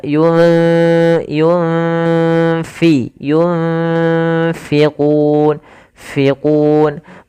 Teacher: Nah, kemudian yunfi itu nun mati bertemu fa ada bacaan ikhfa ini usahakan disamarkan nunnya kepada huruf fa. Makhraj fa ada bibir maaf gigi atas menempel dengan bawah ya.